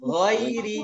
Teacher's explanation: Gha dengan kha makhrajnya sama. Tempat keluarnya sama di ujung tenggorokan. Tapi kalau kha bunyi seratnya itu kedengaran. · kalau misalnya kita mau mengawali suatu ayat dari huruf gha, jangan sampai ada bunyi e-nya. Ghairi, ya hati-hati jangan ada e-nya.